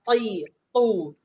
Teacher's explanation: Ta tu kena bunyi dengan berat, dengan tebal ti, tu. Kalau tak bunyi beratkan dia tertukar dengan huruf ta.